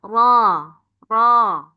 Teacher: Tapi kalau dalam e huruf hijaiyah dia agak cadel. Ro ro cukup dua getar.